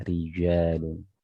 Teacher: huruf jim ini makhrajnya dari tengah lidah, jadi yang terangkat adalah tengah lidah. Rijalun beda dengan J-nya kita ya, Jakarta ujung lidah ja, bukan ja ya.